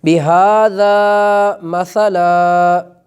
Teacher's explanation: ویسے تو ہم پڑھیں گے مثلاً، لیکن جب وقف کریں گے تو چونکہ اس پر دو زبر ہیں اور آگے الف ہے تو ایک زبر جو ہے اس کو ادا کیا جائے گا